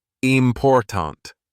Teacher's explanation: in the word important the stress is on the second syllable